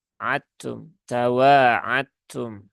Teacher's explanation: dibaca izhar denganum tadiah maka ini menjadi keliru ya menjadi keliru Di sini dia tidak boleh dibaca izhar ya tetapi harus dibaca dengan Idgham ya namanya ee idgham mutajanisain ya jadi ta dengan Dal itu